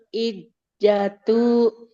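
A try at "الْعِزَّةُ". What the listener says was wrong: Nggak boleh ijatu huruf zai seperti z. Za. Za. izzatu.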